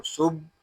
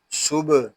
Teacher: صاد با پیش صبح. یہاں با ساکن ہے، اس میں کلکلا خوب ظاہر کریں گے. اس کو صبح ایسے نہیں پڑھیں گے، اس کو پڑھیں گے صبح.